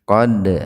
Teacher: Qad, qalqalah sugro, huruf dal yang sukun di tengah-tengah kalimat dipantulkan secara ringan